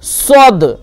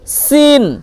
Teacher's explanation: রকম শুধু পুর মানে মোটা আর হচ্ছে বারিক পাতলা এর পার্থক্য সদ এটা পুর হবে মোটা হবে এবং সিন বারিক হবে ঠিক আছে সদ এটা পুর হয়ে গেল সিন বারিক হয়ে গেল